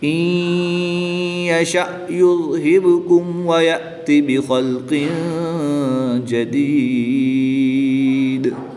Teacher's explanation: نون ساکن میں یہاں پر ادغام مع الغنہ ہوگا، غنہ کر کے پڑھیں گے۔